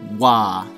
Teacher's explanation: a little bit too it's a Veer approximate GA but also with rounded lips like you're saying the ooh sound so you just add a little W to it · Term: velar approximant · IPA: /ɰʷa/